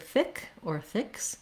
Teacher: This is a lax, short, high front vowel